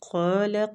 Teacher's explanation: قاف مستعلیہ پور پڑھیں گے، کھینچیں گے بھی، قال ہو کو کھینچیں گے، الٹا پیش کو بھی ایک حرکات کھینچ کے پڑھا جاتا ہے۔